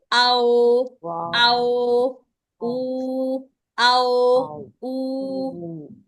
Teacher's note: जब तक होठों की पूरी गुलाई नहीं करेंगे तो ये अदा नहीं होंगे। पेश और वाव के लिए होठ पूरे गोल होते हैं। पेश के लिए और वाव के लिए होठों को पूरा गोल करना होता है।